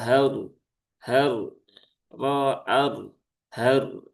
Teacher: maka r-nya ketika sukun dia dibaca dengan tafkhim ya dengan tebal